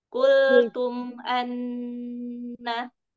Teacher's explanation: Kultum mim mim sukunnya nggak perlu dipanjangkan karena dia izhar safawi.